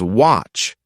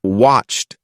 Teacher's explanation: she was saying watched as watch without adding the ed sound